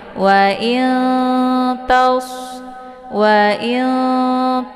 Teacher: makhraj Nun dengan ta itu saling berdekatan ya tempat makhrajnya itu sama ya yaitu ujung lidah nunnya ta juga ujung lidah maka cara bacanya nunnya disamarkan kemudian siap-siap masuk ke huruf ta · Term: Ikhfa aqrab